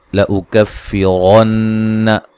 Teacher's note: لأکفرن نون مشدد پہ غنہ ضروری ہے